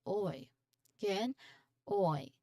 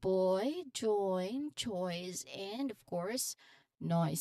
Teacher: So this is a gliding vowel that starts with O sound then like door like and glides towards the short E sound. So your lip starts rounded and then spread. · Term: oi sound